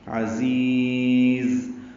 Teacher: دونوں زا تیز صفیر کی آواز سے ادا کریں گے. عزیز، زی یا مدہ ہے اور دوسری زا ساکن ہو جائے گی وقفاً، تو پہلی زا کو لمبا کر دیں گے، دوسری زا پہ وقف کر دیں گے.